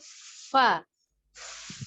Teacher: Nah, kita perhatikan secara makhrajnya, huruf fa itu ujung gigi seri atas ya, ujung gigi seri atas itu bertemu dengan perut bibir bawah ya. Jadi seperti kita meniup di huruf fa. Nah ini ujung gigi seri atasnya ya, bertemu dengan bibir bawah ya, perut bibir bawah.